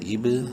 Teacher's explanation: قلقلہ کریں گے، با ساکن ہے، حروف قلقلہ میں سے ہے جو 5 ہیں. قاف طا با جیم دال جب وہ ساکن ہو ان پر قلقلہ ہوتا ہے.